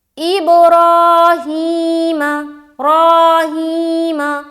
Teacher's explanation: را کو موٹا کرتے ہوئے لمبا کریں گے کیونکہ کھڑا زبر ہے، اور ہا کو بھی لمبا کریں گے کیونکہ کھڑی زیر ہے، اور میم کو جلد ادا کریں گے۔